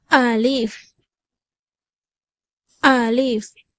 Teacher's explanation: தொண்டைக்கும் வாய்க்கும் இடைப்பட்ட காலியான இடத்திலிருந்து அலிஃபுடைய சப்தம் பிறக்கிறது. அலீஃப் அலீஃப்.